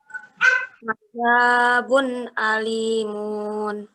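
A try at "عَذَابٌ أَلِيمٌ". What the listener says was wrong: Munnya pendek. Alimun gitu.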